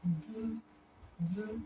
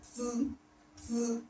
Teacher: the airflow that comes out when you pronounce D, D is not that much. It's not obvious. But when you pronounce T, T, it's obvious.